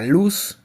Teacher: el aire pasa por los lados de la lengua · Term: sonido lateral